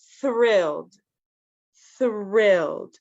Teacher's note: So the TH, it's the soundless TH. Remember, there's two ways to pronounce TH in English.